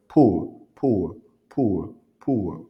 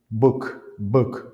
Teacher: ici P et B ça se prononce de la même manière la différence est que pour les B vous faites vibrer le cord vocal